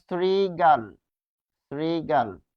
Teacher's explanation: তালব্য স এর সাথে যদি রি থাকে, তাহলে কি হয়? দন্ত স হয়।